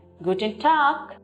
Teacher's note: Now here, although you see the word T-A-G, in English it is pronounced as tag. You can see the letter G at the end, but we do not take the G pronunciation, rather we take the K pronunciation.